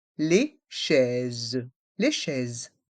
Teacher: Et le S à la fin est muet.